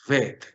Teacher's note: Le quito el dagesh lene y digo vet, es decir, la pronunciación fricativa.